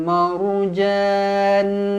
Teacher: ra dibaca tebal kerana sebelumnya berbaris atas